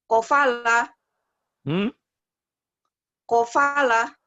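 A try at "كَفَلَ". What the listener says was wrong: Kofala. Bukan kofala. Kofala datar.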